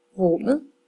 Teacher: Hvis jeg har ordet rummet, så lyder min korte vokal faktisk lidt mere som et å, rummet. Så går jeg her over på trappen og finder å.